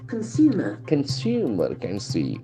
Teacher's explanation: we have got three syllables: consumer, consumer, and the accent falls on the second syllable.